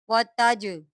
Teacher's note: वतजअलूना वतजअलूना, ता जीम ज़बर ताज, जीम हरूफ कलकला में से है, आप इसको कलकला के साथ पढ़ेंगे।